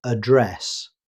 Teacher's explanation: The stress falls on the second syllable, address. Mobile.